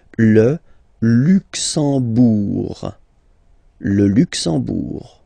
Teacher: You don't pronounce the M at all, it's this nasal en, okay? Le Luxembourg.